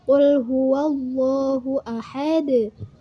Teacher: Qalqalah kubro. Berarti harus dipantulkan tetapi agak besar atau agak berat cara memantulkannya.